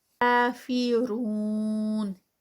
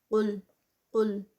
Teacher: قاف جو اسٹارٹنگ پہ ہے یہ ہیوی والا ہے، تو اس کو ہیوی ہی رکھنا ہے۔ قل قل، یہ کافرون میں جو ہے یہ لائٹ ہے اور یہ قاف ہیوی